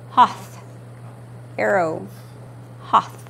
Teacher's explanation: short vowel o sounds like an A in the English word got